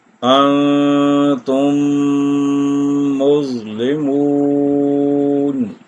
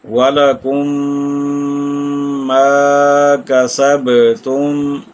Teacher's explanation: تو اب پہلی میم دوسری میم میں مدغم ہو جائے گی، یعنی مل جائے گی اس کے اندر، تو اسے کہا جائے گا ادغام شفوی۔ ادغام شفوی جو ہے اس کو جب ہم ادا کریں گے تو ہم اس پر 1 الف یا 2 حرکات کی مقدار ٹھہریں گے، رکیں گے، یعنی غنہ کریں گے۔